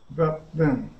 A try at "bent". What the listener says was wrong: Okay, it sounds like that T sound may be a little bit challenging for you at the end. Your B's and V's are doing okay, all right?